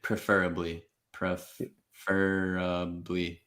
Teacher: Basically all schwas again until the very end.